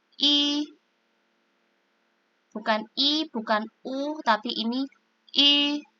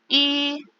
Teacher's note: kita bunyikan huruf I, tetapi mulutnya maju, seperti kita mengatakan U. Jadi bunyinya I, mulutnya maju.